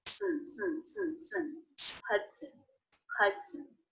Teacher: when the schwa is followed by the N sound, you don't need to worry about making a separate schwa sound. It gets absorbed by the N.